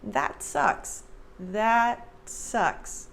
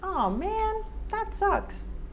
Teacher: there's no air released at the end of that t that sucks that sucks it just gently touches the top of my mouth so it gives it that very subtle t alright so practice